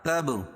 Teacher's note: با پر قلقلہ، کیوں؟ اس لیے کہ یہ حروف قلقلہ کے 5 حرفوں میں سے ہے اور ان پر جزم ہے